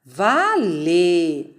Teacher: A sílaba tônica é o vá.